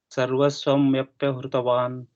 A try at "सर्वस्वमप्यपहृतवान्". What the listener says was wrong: One pa got missed. Apyapahृतवान्.